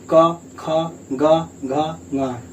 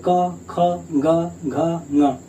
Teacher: पहले बार का खा गा घा गा, कहीं भी जीभ टच हुआ, जीभ कहीं भी नहीं टच हो रहा है, इसका मतलब है सीधा आवाज यहाँ का कंठ से आ रहा है